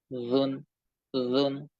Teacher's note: জিহ্বার আগা সামনের উপরে দুই দাঁতের আগার সঙ্গে লাগিয়ে ধরে রাখেন। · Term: জাল